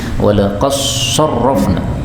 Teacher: ini Dal ketemu Shad boleh idgham menjadi walaqofna